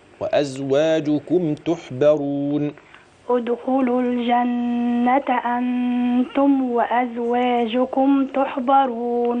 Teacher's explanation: الميم في وازواجكم مافيش فيها غنه واضحه